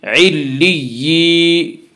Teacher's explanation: تشدید کے بعد تشدید ہے، اس لیے تشدید والے حرف کو ایک دوسرے سے ملا کر پڑھیں گے، علی یا زیر ی، یا ساکن سے پہلے زیر ہے، یا مدہ ہوا، اس لیے یا مدہ کو ایک الف کے برابر کھینچ کر پڑھیں گے